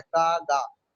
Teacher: का गा, जब का गा बोलेंगे आपको लगेगा कि जबान पीछे से उठती है और वो जो छोटा सा योबुला है उससे टकराती है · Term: वेलर